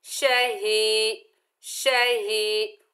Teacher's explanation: एक अलिफ की मिकदार खींच कर पढ़ेंगे और हा को सीने से अदा करेंगे। ये हालांकि उस हिस्से से अदा होती है जो हमारे सीने की जानिब है।